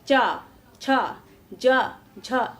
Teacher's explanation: च छ ज झ य इसका उच्चारण स्थान तालू माना जाता है · तो जब भी हम उच्चारण करते हैं च वर्ग का, तो हमारा जो जिह्वा है इसका ये उठकर तलवे में जाकर सटता है, इसलिए इसका उच्चारण स्थान तालु मान लिया जाता है।